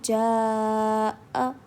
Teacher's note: Okay, so first والی definition میں یہ کہہ رہے ہیں کہ حروف مدہ کے بعد حمزہ اسی کلمے میں ہو تو مد لازم ہوگا. مینس ایک ہی ورڈ میں مد کے بعد اگر حمزہ آ جائے گا تو وہاں پر مد متصل کا قاعدہ ہوگا. وہاں پر ہمیں 3 الف کے برابر کھینچ کر پڑھنا ہے